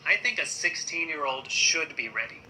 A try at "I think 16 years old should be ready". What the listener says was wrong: I think 16 years ไม่ใช่ years I think 16 years old should be ready เหมือนการ pronunciation ของเรามันแบบ ready มันแบบมันพุ่งออกมาเราต้องทำให้มันธรรมชาติมากขึ้นเนาะโอเค I think at 16 years old should be ready ไม่ใช่ ready มันอันนั้นเกินไปปะแต่มันก็มีแต่มันก็มีคนที่มีสำเนียงแบบนั้นอยู่แบบอันนั้นเลย ready แบบนั้นก็นะโอเค